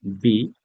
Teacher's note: দুই ঠোঁট একসাথে বি, মোটা সাউন্ড বি, এফ, হালকা সাউন্ড জি, একটু শক্ত করে জি, এইচ, আই, এই জেই, এটা জে না, জেই, জেই, রস্যই, জেই, আমার নামে জেই যাই।